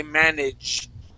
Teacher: when we say that j sound, our tongue is kind of scraping the top of our mouth.